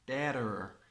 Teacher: In American accent, they have a rhotic accent, so they close the end of the word with an R.